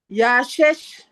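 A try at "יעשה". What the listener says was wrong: Non. Chez. Le son che. Le point serait à droite, mais le point, il est à gauche.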